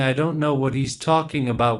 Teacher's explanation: we don't stress I or he is or about